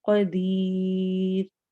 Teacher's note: اور قدیر میں اخفا ہو رہا ہے، نون کی آواز کو ہم چھپائیں گے اور آخر میں رو کو باریک پڑھنا ہے کیونکہ اس سے پہلے یا آ رہا ہے. ہم یہ پڑھ چکے ہیں رو ساکن سے پہلے اگر یا آ رہا ہو تو ہم اس رو کو باریک پڑھتے ہیں.